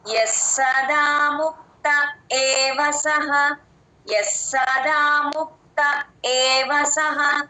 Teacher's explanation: చేస్తే ఆ స కింద స వత్తు క్లియర్ గా వినిపిస్తుంది. యస్సదా ముక్త ముక్త తర్వాత చిన్న గ్యాప్ ఇచ్చి ఏవసః అని చెప్పాలి ఏ అచ్చు కాబట్టి ఆ ఏ కంఠంలో నుంచి రావాలి ఏ యస్సదా ముక్త